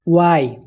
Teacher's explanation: ওয়াই এর শুরুতে হালকা ও এর টান থাকে।